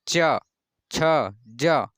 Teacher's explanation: और जो जीभ जो ऊपर जबड़े में सटती है जब भी, जैसे आप अगर बोल रहे हैं च, छ, ज, तो जीभ आपकी ऊपर सट रही है, ऊपर वाले जबड़े में सट रही है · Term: तालु